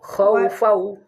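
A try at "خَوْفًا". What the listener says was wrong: Bukan hau tapi khawfau ya kho.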